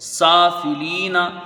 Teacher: سب میں زبر ہے، جلدی پڑھے جائیں گے سب حروف، سافلین، سین میں کھڑا زبر ہے، ایک الف کی مقدار اس کی رہے گی